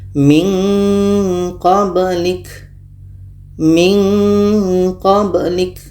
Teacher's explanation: untuk Q dengan K Ini menghasilkan bunyi nga bunyi ng ahah nun mati bertemu qo qo jauh makhrajnya dari huruf nun